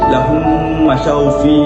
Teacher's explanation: kita memasukkan huruf mim itu ke dalam mim yang seterusnya dan membaca dengan dengung secara 2 harakat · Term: idgham mislain